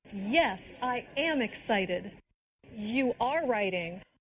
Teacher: Did you hear the stress on the verb be when said am and are?